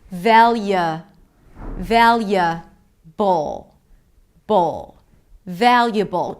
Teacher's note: Just like with inevitable, we have the B sound, schwa, and dark L.